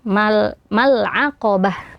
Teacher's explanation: ketika waqaf pada ta marbutoh ini, tanya dibaca menjadi ha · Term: Ta marbutah